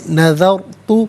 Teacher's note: را ساکن ما قبل ذال پر زبر ہے، را ساکن کو پر کر کے پڑھیں گے